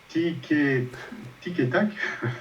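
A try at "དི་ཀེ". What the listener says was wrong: Alors, c'est mieux de dire dike, daki. C'est mieux de dire daki. Te, là, c'est inexpiré. Te pas.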